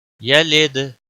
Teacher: दाल पर कलकला होगा